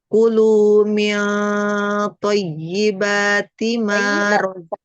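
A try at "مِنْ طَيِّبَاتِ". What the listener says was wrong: Tebalkan, tebalkan, sempurnakan fathahnya. Min thayyibat.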